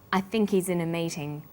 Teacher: The word think is stressed in this sentence, and he's is unstressed. When these words are linked, the h is dropped.